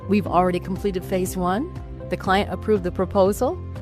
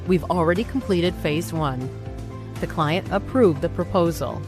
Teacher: But the pitch of her statement went up at the end. In American English, rising intonation signals uncertainty or a question.